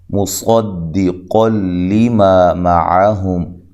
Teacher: صاد کو موٹا ادا کرنا ہے، قاف کو موٹا ادا کرنا ہے ، اور یہاں نون تنوین کا ادغام ہے لیکن بلا غنہ